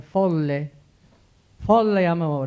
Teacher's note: Those are open vowels, O and E.